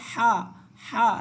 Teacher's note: এই হাটা উচ্চারিত হবে একেবারে গলা থেকে ভিতর থেকে শুধু আসবে হা